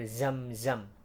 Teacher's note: keluar di antara Gigi atas dan Gigi bawah dan desisnya itu terasa banget